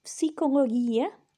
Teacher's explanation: in modern Greek, the G is more like a Y sound. In ancient Greek, it's a hard G sound.